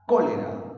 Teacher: Correcto, el acento está en la sílaba co. Ese acento está llevando una tilde. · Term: acento ortográfico